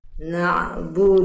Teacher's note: Nah, ain sukun harus ngalir suaranya.